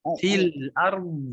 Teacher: jangan dipantulkan do-nya. Fil ard.